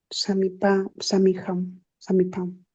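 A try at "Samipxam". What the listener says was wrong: pero ¿dónde está la P? Ya no estás pronunciando la P. ¿Dónde está? pero ya no estás pronunciando la P. A ver, pronuncia la P y la X.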